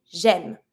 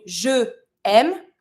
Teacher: So instead of saying je aime, because I don't want two vowels, I'm going to be saying j'aime.